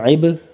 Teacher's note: با کے اوپر ٹٹکا دینا ہے، قلقلہ کرنا ہے